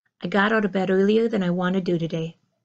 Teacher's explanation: Ah, and I didn't mark it, but I do think that my T on today is also unreleased, and it sounds more like a D